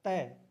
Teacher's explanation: जीभ है वो दांतों को स्पर्श करती है